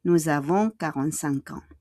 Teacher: Nous avons, faites en liaison. Yung S, the S will become a Z